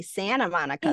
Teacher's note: they drop tees that's a California accent